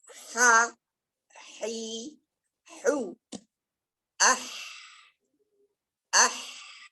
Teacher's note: Sifatuha rokhawah, mengalir suara. Hams, mengalir nafas. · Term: istifal